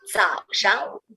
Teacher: because the 上 is no tone, so it's fast and light.